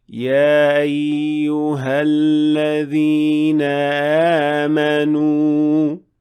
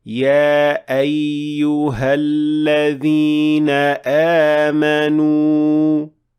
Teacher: when the vocal cords are not fully closed, which then makes the hamza almost not audible at all, especially when it is in the middle of the word.